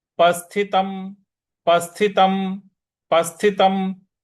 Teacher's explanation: म का पूरा उच्चारण नहीं करना है म को वहीं पे जाकर के रुक जाना है